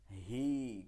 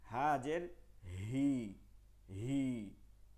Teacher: একদম হলকের শুরু থেকে হবে, গলার একদম নিচের ভাগ থেকে, আর গম্ভীর আওয়াজে মুখ থেকে এই উচ্চারণটা আসলেই গলার নিচের ভাগ থেকে আসে অটোমেটিক।